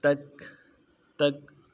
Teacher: अब काफ में कोई हिलाना नहीं, कलकला नहीं करेंगे। अमन काफ में कलकला किया जाए, तक तक को मोटा भी किया जाता है, ऐसा नहीं करना है।